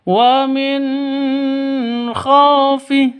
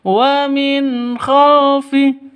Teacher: Nun matinya jelas khnya juga jelas.